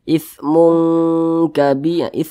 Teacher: Jadi lebih condong berbunyi eng, tapi didengungkan. Disamarkan ya, didengungkan lebih condong berbunyi eng. Ithmun kabi, mungnya itu kita panjangkan, 2 harokat. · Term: ikhfa hakiki